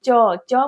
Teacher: च बोलने पे हमारा टंग जो है, जीभ जो है वो तालु से सटता है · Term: तालव्य वर्ण